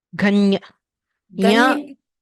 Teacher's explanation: You have to press the tongue to the place just behind the teeth. The nasal sound you get there.